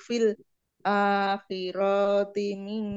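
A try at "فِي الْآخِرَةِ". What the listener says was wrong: Fil akhiroti. Ronya pendek.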